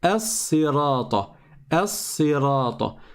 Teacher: le lem, en réalité, il a fusionné dans le sad. Il s'est transformé en sad et il a fusionné dans le sad. Donc on ne prononce pas la lettre lem non plus. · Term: lettre solaire, shamsiya